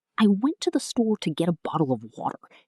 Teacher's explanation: The stressed words are went, store, get, bottle, water. Those are the important words.